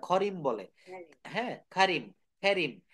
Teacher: ব্রিটিশরা কিন্তু এটাকে ক বলতে পারে না এটা খেই বলে